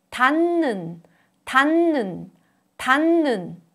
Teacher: Under the influence of 느, a nasal, 드, a plosive, changes to a nasal 느 sound.